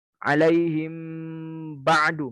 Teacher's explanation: dibaca dengan samar-samar disertai dengan ghunnah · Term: Ikhfa Syafawi